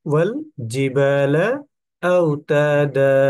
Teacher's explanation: অর্থাৎ আমরা এখানে কি দেখলাম, যে দুই জবরের পরে যদি থামি তাহলে কিন্তু সাকিন হবে না, একালিপ টেনে পড়তে হবে